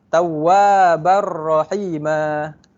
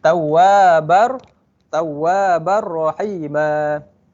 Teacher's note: Hukum dia tanpa dengung dan tiada harakat.